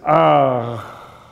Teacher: like a little bit of a glottal stop at the end of the long ah